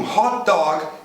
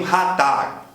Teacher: Na variante britânica, isso vai ser mais próximo do nosso O, e na variante americana, quase beira o nosso A.